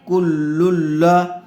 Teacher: کاف لام پیش کل، لام لام دو پیش لل، کل، لام زبر لا، کل لا۔ تنوین کے بعد حروف یرملون میں سے لام آیا ہوا ہے، اس لیے بغیر غننے کے ملا کر پڑھیں گے